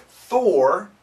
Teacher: it's an aspirated, lots of wind. Thor, it's not vibrated.